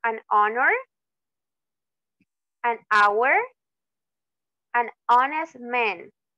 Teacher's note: aunque tenga una H esa H no tiene sonido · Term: H muda